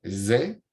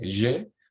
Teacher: Los fonemas sibilantes sonoros, perdón. Cada vez que aparece un fonema sibilante sonoro, directamente el español lo hace desaparecer